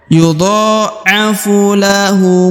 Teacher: ujung maka dia sukun karena dia sukun maka harus dipantulkan karena huruf ba adalah huruf pantul ya atau huruf Qalqalah berubah menjadi pantul apabila dia berharakat sukun